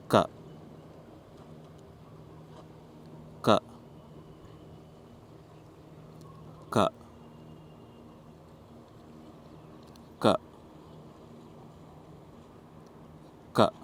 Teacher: These consonants are called as kanthyas, which means all 5 of them are uttered from the pit of the throat. Notice as we write it, how each sound comes from the pit of the throat.